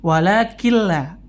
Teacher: nunnya sudah tidak terdengar lagi bunyinya. Dan bila gunna, tanpa gunna.